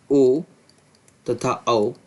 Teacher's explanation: तालू कंठ प्लस तालू इनसे बोला जाएगा ए और अ ठीक सातवा उच्चारण स्थान कंठ प्लस ओट इसका हो जाएगा ओ तथा औ यह कंठ और ओष से